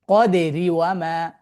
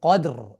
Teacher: ফাতহা দিয়ে রকে সুকুন করলে ওই র যদি কাসর অবস্থাতেও যদি থাকে তাহলে সেই তখন কি হবে, রটা হেভি হবে। আবার যখন মিলিয়ে পড়বো আমরা, তখন আমরা হচ্ছে কি পড়বো, তখন হারাকা যেটা থাকবে সেটাই তার উচ্চারিত হবে, ঠিক আছে।